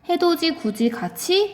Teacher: 디귿과 또는 티읕과 같은 받침이 뒤에 이라는 모음을 만났을 때 때때로 지읒 또는 치읒으로 변화하는 현상